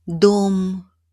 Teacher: Stressed O is pronounced clearly as a long, rounded O.